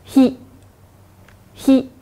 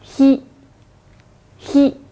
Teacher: 发音的时候，舌头中部靠近上颚，有点气流摩擦而出的感觉。